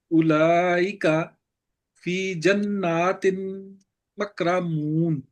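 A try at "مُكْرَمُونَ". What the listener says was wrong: मुकरमून मीम पे पेश है।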